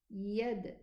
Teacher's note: This is qalqala. Okay, the dal sakina is qalqala.